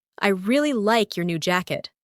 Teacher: The stressed words are really, like, new, and jacket. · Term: stress pattern